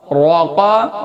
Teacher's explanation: रा को मोटा पढ़ेंगे, रा जबर रा, काफ जबर qa, राका, रा भी मोटा काफ भी मोटा